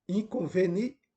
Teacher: quando você analisa a sílaba tônica, você percebe que essa sílaba é a penúltima da direita para a esquerda. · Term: palavra paroxítona